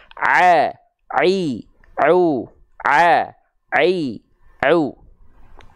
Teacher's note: dilafalkan tanpa nafas yang keluar adalah huruf Ain